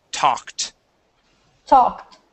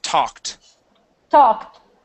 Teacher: when a word ends with a K, okay, the ed makes a T sound